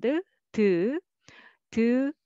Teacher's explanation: three step consonant is ㄷ family so tongue tip sound ㄷ